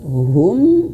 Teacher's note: Idgham artinya masuk huruf mim. Masuk hum. Masuk berarti ditahan dua harakat.